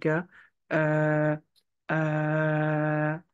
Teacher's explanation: The sound G is the sound K with an added throat vibration. The throat vibration, to know if you're doing it well, you place your fingers on your throat and then you try to make the vibration.